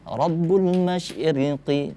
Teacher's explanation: Tapi ketika dia di posisi seperti ini, huruf ra di baris kasrah, itu dibacanya harus tipis. Dibaca ri, tipis.